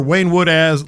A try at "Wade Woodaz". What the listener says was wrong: Did you call him Wayne? It's Wade. And he seems like somebody that would take offense to you calling him Wayne.